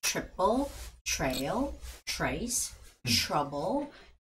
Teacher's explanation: TR makes the CH sound